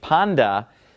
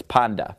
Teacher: Now this ending right here that's on the end of panda, and of course I'm pronouncing it panda, because the taf, whenever it comes after ni, it makes that D sound, okay? Taf usually makes a T sound, but when following the letter ni, it makes a D sound